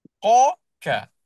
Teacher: Makhraj dia sama iaitu pada pangkal lidah.